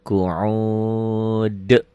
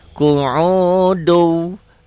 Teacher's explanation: Dalnya ini qalqalah kubro karena dihentikan. Qu'ud. Kalau nggak berhenti, qalqalah kubronya nggak ada, qalqalahnya nggak ada.